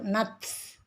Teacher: ada hams, jadi ada udara yang mengalir.